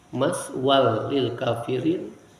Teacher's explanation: maswan masuk kepada huruf lam idgham tanpa gunnah